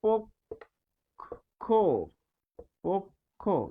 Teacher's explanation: তো এখানে আমরা দেখছি যে প এর সাথে স্বরে অ রয়েছে তাই এটি হচ্ছে পো, আর এটি হচ্ছে ক্ষীয় এর উচ্চারণ, ক্ষীয় এর উচ্চারণ ক খ, যেহেতু ক্ষীয় পরে রয়েছে তাহলে পক্ষ, পক্ষ, এটি হচ্ছে উচ্চারণ।